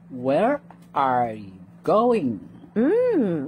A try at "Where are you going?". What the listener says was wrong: That was good.